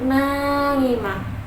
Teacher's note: Nunnya itu naimah, itu mad tabi'i karena huruf nunnya berharokat fathah bertemu dengan alif, dibacanya panjang 2 harokat